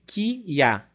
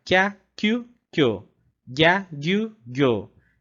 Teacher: Mas aqui, como ele está menorzinho, a gente vai ter um som que vai juntar as duas sílabas. Então, a gente vai falar kya. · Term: ditongos